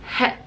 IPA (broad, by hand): h